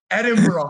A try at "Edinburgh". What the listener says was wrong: You were more like a borough. No, that's how it's Edinburgh. Yeah, you got to roll it.